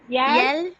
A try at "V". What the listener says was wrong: எல் கிடையாது, எவ் எவ் ERR எவ்.